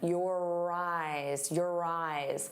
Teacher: And notice how your and eyes link together. You're going to hear that R sound on both sides of the word if we link them.